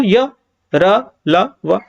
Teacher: अल्प प्राण में आप देखोगे य र ल व ठीक है देखो कम हवा निकलेगी